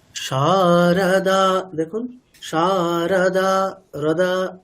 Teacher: রটাকে just touch করেই পরের অক্ষরে চলে যাওয়া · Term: হ্রস্ব